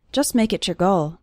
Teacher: the t at the end of the word just is barely pronounced